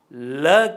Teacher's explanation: مثال کے طور پر مسمتہ ل کی ادائیگی پر غور کیجیے تو آپ محسوس کریں گے کہ ل کی ادائیگی میں سانس کی ہوا زبان کی دونوں جانب سے خارج ہوتی ہے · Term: پہلوی مسمتہ